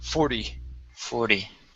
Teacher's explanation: Give me that flap T sound at the end